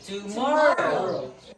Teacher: Two, more, and row. So the more here is the stress, and then the two and row are the unstressed.